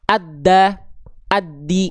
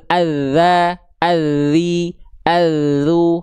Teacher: Ini yang betul, suaranya ngalir. Ketika ujung lidah nempel ke ujung gigi seri atas, suaranya mengalir. Ngalir. Karena cuma ditempel tipis-tipis saja.